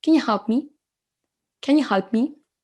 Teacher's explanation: Le you, ça se transforme un petit peu en ya. En fait, on l'entend à peine.